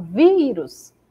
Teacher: Por exemplo, na palavra vírus, quando eu falo vírus, a sílaba vi se destaca mais que as outras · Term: sílaba tônica